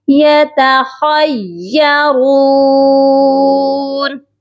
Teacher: یا مشدد ہے، خا کو یا کے ساتھ سختی سے ملا کر پڑھا جائے گا